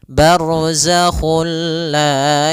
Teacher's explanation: juga sendiri itu idgam yang kita namakan juga idgham Kamil yaitu kita memasukkannya secara utuh secara seluruhan kepada huruf lam sehingga tidak menyisahkan sedikit daripada bunyi huruf nunnya ya Sehingga langsung masuk barzak kulla dan dia bila gunah berarti